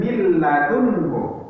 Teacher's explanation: kalau idgham bila lunnah, nun sukun ketemu dengan lam atau ro, maka nun sukunnya ini dimasukkan ke lam. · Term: idgham bila gunnah